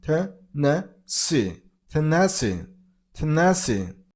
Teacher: And stress on the third syllable, on C sound,